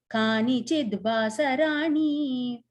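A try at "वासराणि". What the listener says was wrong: So on the end, the Rani is a short E. Okay, it's not a long E. So that's not.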